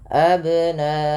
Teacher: cara memantulkan qalqalahnya adalah dibunyikan ya, tapi dia tidak putus dan tidak tertambah hamzah. Maka abna sesuai dengan hurufnya saja, dibalikkan kepada hurufnya.